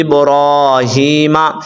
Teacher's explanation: را کو اور ہا کو آپ نے لمبا کرنا ہے